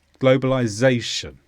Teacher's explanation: this is a noun with the stress on Zay globalization and this simply describes the process of things becoming Global